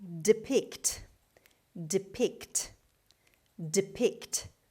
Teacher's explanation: The stress is on the second syllable on P sound. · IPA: /dɪˈpɪkt/